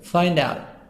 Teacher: Find out, make a link between D and O.